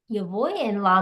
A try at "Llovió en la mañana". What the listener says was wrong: It sounds like you're saying yo voy. Yo voy is I go, but this one is one word, is the verb to rain. So llovió, llovió.